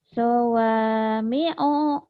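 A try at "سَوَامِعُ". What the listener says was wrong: Sawami'u. Pendek.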